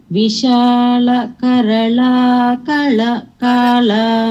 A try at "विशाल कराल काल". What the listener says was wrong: இல்லம்மா கரலா கிடையாது கரால கரலா கிடையாது கரால